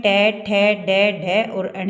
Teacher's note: ट वर्ग में ट ठ ड ढ और अण ये होते हैं मुर्धन्य व्यंजन या मुर्धा जिनको मुर्दा भी बोलते हैं और मुर्धन व्यंजन भी